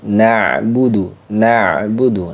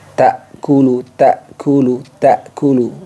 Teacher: sedikit tertahan dan sedikit mengalir Nah itu bedanya Ain dengan Hamzah